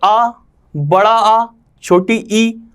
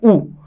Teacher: तो आ, बड़ा आ, छोटी, इनमें परिवर्तन नहीं हो रहा, लेकिन जब हम उ बोलते हैं तो हमारा मुंह आगे की तरफ निकल आता है और ओंठों में घुमाव उत्पन्न हो जाता है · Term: ओष्ठ वर्ण